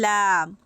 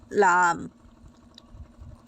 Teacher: জিহ্বার আগাটা সামনের উপরের 8টা দাঁতের গোড়ার সাথে লেগে উচ্চারিত হবে লাম।